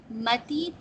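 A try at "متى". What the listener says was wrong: متا یہ یاد سا نقطے نہیں ہیں اس کو متا پڑھیں گے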